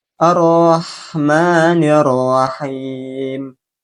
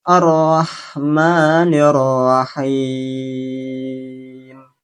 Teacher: Ketika pengucapan him ini boleh dibaca dengan tiga versi, yaitu dengan membacanya dua harakat, empat harakat, dan enam harakat.